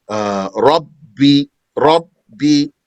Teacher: The ba stops the air and sound altogether because it's not gentle letter.